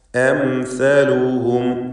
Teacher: ഈ പദത്തിൽ അം എന്ന് പറയുമ്പോൾ തന്നെ സാക്കിനത്തായ മീം വരുന്നു. ഇൽഹാർ ഷഫവി മണിക്കാതെ വെളിവാക്കുക. പദത്തിൻ്റെ അന്ത്യത്തിൽ വീണ്ടും സാക്കിനത്തായ മീം ഇൽഹാർ ഷഫവി മണിക്കാതെ വെളിവാക്കുക.